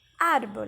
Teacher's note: a segunda sílaba de trás para frente a penúltima sílaba mais forte